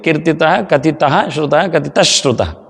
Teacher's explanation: ಕತಿತ ಶ್ರುತ ಎನ್ನುವಲ್ಲಿ ಡಬಲ್ ಶ ಬೀಳ್ತದೆ